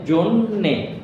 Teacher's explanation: এরপর হচ্ছে জন্যে, এই দেখতে পাচ্ছি জন্যে, এখানে আছে জ, উচ্চারণের সময় সেখানে অ ও এর মতো উচ্চারিত হচ্ছে, এখানে জ না হয়ে গেল কি জো, এই কারণে এখানে একটা ওকার চলে আসছে জো। একই রকম এই নয়ের সাথে জফলা থাকার কারণে নটার দ্বিত্ব মানে দুইবার উচ্চারণ হয়েছে।